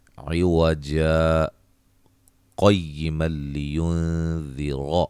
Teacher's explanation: تھوڑا سا لمبا ٹھہرا جاتا ہے وقف سے، یعنی کہ سانس ٹوٹے بغیر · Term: سکتہ